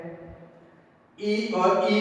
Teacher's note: इसका उच्चारण तालु से होता है, इन्हें तालव्य स्वर कहते हैं।